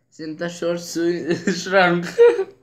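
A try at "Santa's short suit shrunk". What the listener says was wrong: Suta, not sweet. Senta short suit shrunk.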